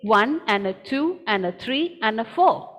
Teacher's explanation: my word and has become n i'm not saying the word completely n i'm saying n one and two and three and four